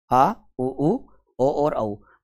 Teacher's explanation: जीवा के पस भाग से उच्चारित होते हैं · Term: पस स्वर, पश्च स्वर